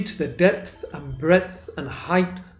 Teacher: Perhaps the best thing that can be said about it is the repetition of the voiceless dental fricative that's the 'th' in depth & breadth